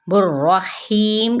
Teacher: यहाँ पे रॉ तशदीद फतहा है यानी ज़बर है, तो इसको पुर पढ़ा जाएगा